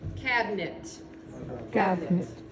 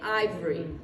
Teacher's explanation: so sometimes we're going to take out a whole syllable usually it's one vowel by itself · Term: schwa syllable